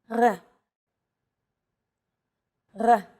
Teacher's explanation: It's pronounced at the back of the throat instead of forward in the mouth.